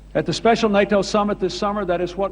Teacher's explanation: Otro ejemplo de voz oral es la de Bill Clinton, que de hecho no tiene una voz demasiado resonante, no usa las resonancias de pecho. Su voz es más bien aguda y se la puede considerar una voz oral con un timbre algo nasal.